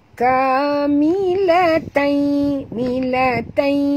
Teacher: tanwin bertemu dengan ya masuk dan dengung ya masuk dan dengung masuk sepenuhnya